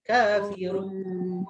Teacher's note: dia tak dengung, jadi dia tak sampai ke hidung. Run, hujung lidah kena langit-langit, habis kat situ.